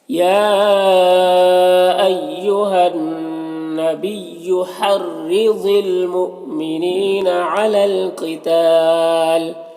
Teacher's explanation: یا میں مد منفصل ہے، نون مشدد ہے، غنہ ہوگا، رائے مشددہ کے نیچے زیر ہے، را کو باریک پڑھیں گے، ضاد حروف مستعلیہ میں سے ہے، پر پڑھیں گے. یہاں پر حمزہ ساکنہ ہے، جھٹکا لگے گا، نیم یا مدہ ہے، ایک الف کے برابر کھینچیں گے. · علی القتال قاف حروف مستعلیہ میں سے پر پڑھیں گے، یہاں پر الف مدہ ہے.